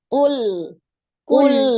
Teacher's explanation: Itu namanya tawalud ya, ada pantulan. Nah, dia bukan huruf qalqalah, maka ketika disukun jangan dipantulkan ya.